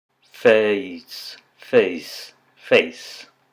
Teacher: If you slow that down as you pronounce it, you'll probably hear that you're starting with a eh sound of some sort and moving towards an I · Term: diphthong